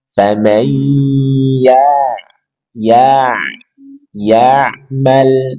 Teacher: ain punya sifat bainiyah, tawassut. Maka ketika sukun, sedikit alirkan suara.